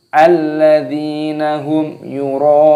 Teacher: Rohnya ini dibaca mad wajib mutasil, dipanjangkan 6 harokat, 6 ketukan